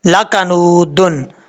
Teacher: یہاں پر نون کے بعد واو ہے، واو مدہ ہے، ایک الف کی مقدار اس کو لمبا کریں گے کیونکہ واو ساکن سے پہلے پیش آ رہا ہے